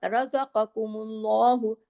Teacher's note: रा हैवी होगा इसमें, काफ हैवी होगा, नुक्ते वाला काफ, क्योंकि रा तो कंडीशन जबर की वजह से हो रहा है ना, और काफ तो है ही मोटे, सात जो मोटे हरूफ है उनमें, बाकी तमाम बारीक होंगे, लेकिन अल्लाह के नाम के अंदर फिर लाम जो है वो हैवी हो जाएगा।